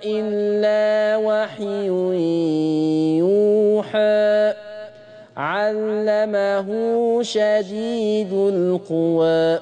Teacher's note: نلاحظ تقليل رؤوس الآية قولا واحدة، كل رؤوس الآية اللي انت واقف عليها دي قللتها قولا واحد.